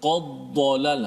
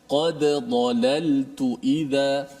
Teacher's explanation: Kemudian ayat yang ke-56 tu, di hujung tu, قَدْ ضَلَلْتُ إِذَا قَدْ ضَلَلْ. Hati-hati kalau ada dal yang mesti kita izharkan, matikan dal tu qalqalah, jangan qaddalal, jangan masukkan dal dalam dad.